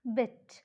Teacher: So, the lips are unrounded. The tongue is lax, bit. Tongue ഭയങ്കര stressful ആയിട്ടുള്ള position അല്ല.